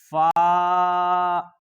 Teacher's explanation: اوپر کے دانتوں کے کنارے اور نچلے ہونٹ کے تر حصہ سے ادا ہوتا ہے